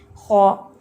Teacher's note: خا کو آپ نے ہیوی بھی کرنا ہے اور اس کا ہمس جو ہے اس کو بھی مینٹین کرنا ہے · اس میں خراش اتنی نہ ہو کہ خرخرا ہو لیکن ایک نیچرل ساؤنڈ ہونی چاہیے, اور اس کا ہیوینس اور اس کا ہمس اس کو انڈرلائن کر لیں سب لوگ.